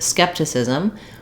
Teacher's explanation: we stress on the first syllable, skep, and that means that we hold this longer than the other syllables, and we're going to have the clear vowel.